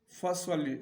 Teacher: اس کو موٹا پڑھیں گے کیونکہ یہ حروف استعالیہ میں سے ہے ، اور آگے جو لام ہے اس کو باریک پڑھیں گے، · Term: سواد